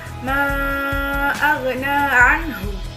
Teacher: anhu dibaca dengan jelas, yang mana dikeluarkan dari tenggorokan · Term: idgham halqi